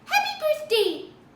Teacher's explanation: there's a little bit of the e sound at the end but it's not nearly as elongated or as fully realized as the way that I say it